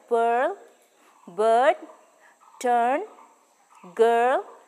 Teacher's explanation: girl etc a formal description of the vowel is given below the height of the tongue is about halfway between open and close part of the tongue which is the highest is the center position of the lips spread opening between the jaw narrow this · So now we have come to the very last vowel, that is the long sound. In pronouncing this vowel, the tongue is raised towards the hard palate to a position between half closed and half open position. The lips are neutral and we can hear this vowel in words like pearl, bird, turn, girl, etc. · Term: long o sound